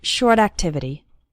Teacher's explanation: the words short and activity also kind of flow into each other.